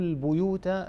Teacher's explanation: ورش رحمه الله وحفص وأبو عمرو يقرؤون البيوت بضم الباء